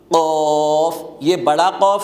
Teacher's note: جب اوپر کا یہ تالو کوا زبان کی جڑ کے ساتھ زور سے ٹکر لگے تو اس سے قوف ادا ہوگا